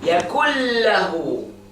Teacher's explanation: You pronounce the noon completely. When you carry on, you say yakullahu. Again, there's no trace, no even gunna here. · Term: adgham